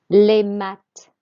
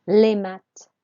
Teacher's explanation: The TH just makes a T sound. So les maths is how we say maths. And we do not pronounce the S on the end. We don't pronounce consonants on the end of words in French.